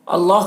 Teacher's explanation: اللہ کے لام کو پر پڑھیں گے کیونکہ اللہ کے لام سے پہلے زبر ہے۔